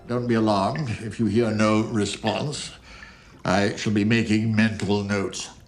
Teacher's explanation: the Prime Minister tended to speak from the back of his mouth